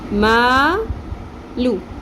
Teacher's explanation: اب یہاں پہ زبر کے ساتھ الف ہے، 1 الف کے برابر ہم نے لمبا کھینچنا ہے